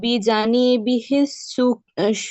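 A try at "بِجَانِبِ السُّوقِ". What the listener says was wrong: বিজানি বিশ্বকি। বিজানিবিহি নেই এখানে। বিজানি বিশ্বকি।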